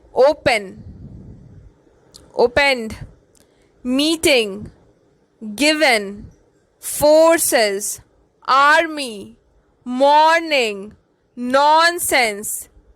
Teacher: Note that the first syllable is stressed in each word.